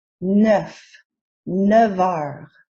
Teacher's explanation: Notice when 9 appears before, heures. the F sound at the end changes to a V sound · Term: liaison